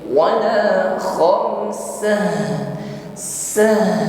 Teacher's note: ta marbutah menjadi huruf ha, ya, maka nampakkan sifat huruf ha, rakhawah, alirkan bunyi hurufnya